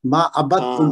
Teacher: دال اور تا کا چونکہ مخرج ایک ہے تو اس لیے اس کی آواز آپس میں ان کا ادغام ہو جائے گا